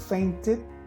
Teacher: the final ed is pronounced as a separate syllable it then removed the final it is pronounced the scared the